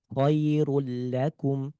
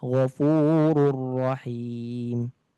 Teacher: Ini dibaca dengan idgham dengan sedikit ada ketukannya untuk menjelaskan tasydid. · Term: idgham bila gunnah